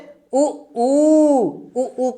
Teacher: उ ऊ कहने से मेरा मुंह गोलगोल हो जा रहा है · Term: वृत्ताकार स्वर